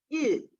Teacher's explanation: it's a high front it's e with your lips rounded or oo but you move your tongue forward you can say